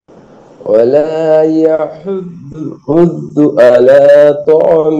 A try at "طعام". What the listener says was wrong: এক আলিফ টান আছে ভাইয়া